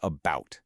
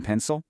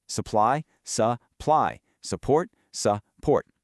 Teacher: It's all about that soft, unstressed uh sound. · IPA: /ə/